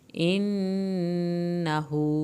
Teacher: नून की शत पे एक अलिफ के बराबर देर लगाएं, हू को खींचें, उल्टा पेश है।